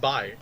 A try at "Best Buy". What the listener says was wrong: like you put too much emphasis on the wrong syllable there. like Best Buy.